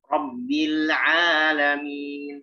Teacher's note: Lebih dibuka fathahnya, lebih dibuka vokalnya. Ya. Al-alamin karena dia bervokal A, berharokat fathah, maka disempurnakan.